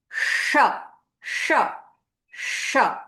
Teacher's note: air is blown out and there is this hissing or a whistling sound that's coming along